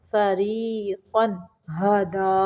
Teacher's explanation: بدأکم تعودون، فریقاً، را کو باریک پڑھیں گے، یہاں پہ جو قاف کے اوپر دو زبریں ہیں ان کو صرف ظاہر کریں گے، غنہ نہیں کریں گے